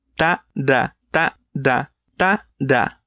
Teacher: They're both done with the same movement on your mouth, but da requires making your vocal cords vibrate. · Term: voice